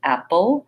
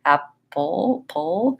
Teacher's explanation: an example of a syllabic L where the L sound again kind of has a little small schwa before it